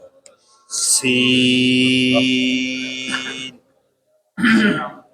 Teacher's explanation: زبان کی نوک اور دونوں دانتوں کے اندرونی کنارے سے ادا ہوتا ہے